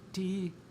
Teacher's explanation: So, for example, if we had a verb like ti, high tone, long vowel